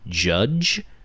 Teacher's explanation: and yeah it's i'm pretty sure it's not even a fricative i think it's called an affricate because it is partially a fricative and partially not